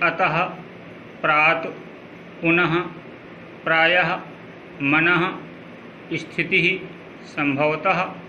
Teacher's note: उच्चारण हल्के हा की भांति होता है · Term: विसर्ग